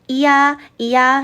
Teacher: 야는요, 천천히 발음하면 이야, 이야 소리가 납니다. 여기에서 이라고 하는 친구가 바로 반모음인 거예요.